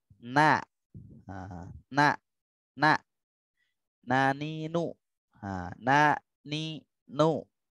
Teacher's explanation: Huruf nun ini sama, cuman agak depannya sedikit gitu. Ujung lidah bertemu dengan langit-langit agak depan gitu.